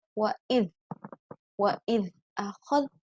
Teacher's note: ada bacaan zal ya, zal sukun. Di sini tidak qalqalah, bukan wa'idh tapi wa'idh.